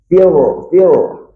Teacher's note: Ra tebal, belakang lidah sedikit ke tengah, kena langit-langit.